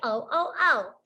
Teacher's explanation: When I say the short O, that sound is coming right from the back of my throat.